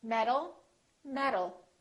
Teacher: word metal metal these two sounds sound exactly the same because the T changes into a D when it's between two vowels